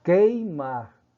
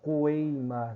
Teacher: o U, você visualiza a grafia, mas não escuta o fonema, a sonoridade